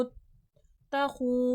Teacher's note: واو مدہ ہے، کھینچ کے پڑھا جائے گا۔ ربکم، رو پہ زبر ہے، رو کو تھوڑا موٹا کر کے پڑھیں گے۔